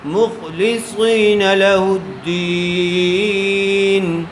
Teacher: خا کو پر کریں گے اور صاد کو بھی پر کر کے پڑھیں گے